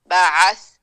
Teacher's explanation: وَكَذَلِكَ بَعَثْنَاهُمْ بعث عین با نہیں ہے اور نہ ہے با، بالکل نارمل انداز میں گلے کے درمیان سے ہم نے عین کو نکالنا ہے. با بعث نہیں ہوئے گا، یہ سا حرف لسوی جیسے زال ہے.